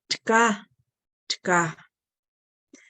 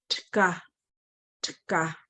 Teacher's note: That's the T and the K are joining together again.